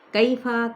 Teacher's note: واو ہونٹوں کی نا تمام گولائی کے ساتھ وا، پہلے ہونٹ گول کریں پھر کھولیں۔ کیفا، کئی پہ یائلین کا قاعدہ ہے، نرمی کے ساتھ ادا کریں